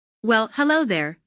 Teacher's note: Notice the emphasis on hello, which shows that me did not expect to see Julia.